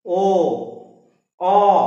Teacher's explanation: আর ওইগুলো যখন করছি তখন দেখো উ গোল করা হয়ে যাচ্ছে, ও অ, দেখো মুখটা একটু গোল, ঠোঁটগুলো একটু গোলাকার হয়ে যাচ্ছে